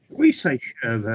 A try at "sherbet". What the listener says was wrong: There's only one R in there.